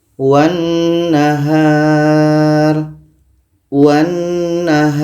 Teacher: maka lam ini tidak kita baca karena wa ini terus melompat ke na terus masuk ke na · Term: alif lam syamsiah